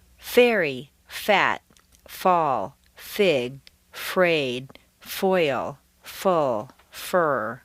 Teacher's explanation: To pronounce F, the lower lip raises up and the inside of the lip very lightly touches the outside of the upper teeth and you make a slight hissing sound. Don't bite the outside of your lip at all.